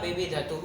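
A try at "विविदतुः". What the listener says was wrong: ध्यान से वर्ण बोलो, ध में मिक्स मत करो। द को साफ साफ बोलो, है ना?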